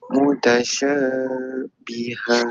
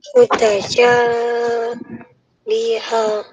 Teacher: Ha ni akan jadi mat aiwat. Mat aiwat tu kena baca panjang dua harakat.